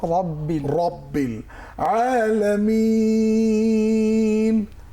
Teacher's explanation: রব্বিল র মোটা রব্বিল আলামিন, আ চাপ দিয়ে পড়তে হবে